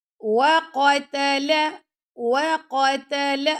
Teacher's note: اب قاف موٹا ہے، تا باریک ہے، لام بھی باریک ہے